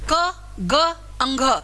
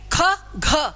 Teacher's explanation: आपके हाथ को वायु थोड़ी लगेगी पहले तीसरे पांचवे को बोलते समय, और दूसरे और चौथे को बोलोगे तो वायु क्या लगेगी? ज्यादा लगेगी।